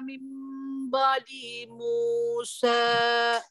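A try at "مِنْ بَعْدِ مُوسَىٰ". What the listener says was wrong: Coba min ba'di di-nya jangan diayun. Min ba'di.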